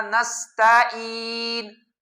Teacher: عین کو غائب کر کے اس کی جگہ پر حمزہ لے کر آنا، یہ بھی ٹھیک نہیں ہے، ایسے پڑھنا نستعین، نستعین کی بجائے نستعین، یہ پڑھنا بھی ٹھیک نہیں ہے۔